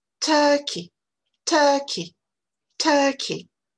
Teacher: Donc, vous voyez, dans ce mot, à nouveau, ce mot de 2 syllabes, vous avez une première syllabe qui est forte et une deuxième syllabe qui est beaucoup plus faible